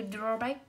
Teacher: từ ghép của từ draw và từ back, vậy trọng âm sẽ rơi vào draw